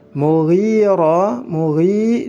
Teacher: mughi dibaca 2 harokat karena ada ya sukun sebelumnya kasrah. Ra-nya juga dibaca panjang 2 harokat dihukumi mad tabi'i.